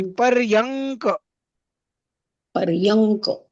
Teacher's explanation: पण बघायला गेलं ना तर मंच मैच होत नाही, पण मंच मध्ये थोडासा न चा पण उच्चार होतो, आणि पर्यंक मध्ये न चा उच्चार होत नाही